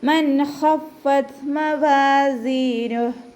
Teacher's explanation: ഖ ഇസ്തിഅലാൻ്റെ ലെറ്ററാണ്, അപ്പോൾ അതിനെ ഉയർത്തിയിട്ട് പറയാൻ ശ്രദ്ധിക്കുക. ഫാക്ക് ശ്രദ്ധ വന്നിട്ടുണ്ട്, അപ്പോൾ 2 ഹർഫുകൾ ഉച്ചരിക്കുന്ന കനം കൊടുത്തിട്ട് ത സുക്കൂനിലാവുമ്പോൾ എന്ത് ചെയ്യണം, കുറച്ചൊരു എയർ പുറത്തോട്ട് പോണ സൗണ്ടിൽ വേണം നിർത്താൻ കേട്ടോ. · ഇദ്ഹാറിൻ്റെ ലെറ്ററായ ഖ വന്നിട്ടുണ്ട്, അപ്പോൾ നൂൻ സാക്കിനയെ വ്യക്തമാക്കിയിട്ട് ഉച്ചരിക്കുക. നൂനിൻ്റെ സൗണ്ട് നല്ലോണം കേൾക്കുന്ന രൂപത്തിൽ വ്യക്തമാക്കുക